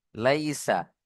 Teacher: ইয়াসাকিন ডানদিকে জবার ইয়ালিন নরম আওয়াজে তাড়াতাড়ি পড়তে হবে